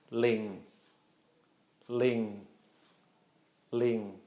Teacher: Just a short mid-tone, ling, ling, ling. Not drawing that out at all